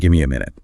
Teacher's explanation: you'll notice the T or the V sound just disappears. The M or N sounds kind of take over and carry the rhythm themselves.